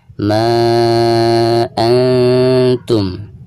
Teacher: Adapun ketika kita membaca ma di sini ini dihukumi mad jaiz munfasil karena ada mad tabi'i alif lalu berhadapan dengan hamzah di lain kalimat antara ma dan antum ya. Jadi dihukumi mad jaiz munfasil, dibacanya bisa 4 atau 5 harokat